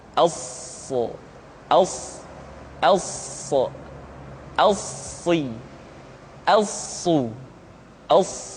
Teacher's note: Untuk memudahkan pengucapan huruf sa, Perhatikan sifat as-safir yang dimiliki oleh huruf sha, yaitu suara tambahan yang terdengar menyerupai dengan suara angsa.